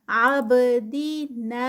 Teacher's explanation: لا پہ 2 کاؤنٹس۔ عابدینا، با ساکن ہے، کتب جد کا لیٹر ہے، تو یہاں پر جزم ہے اس کے اوپر، تو کلکلا ہوگا، باؤنس بیک ہوگی آواز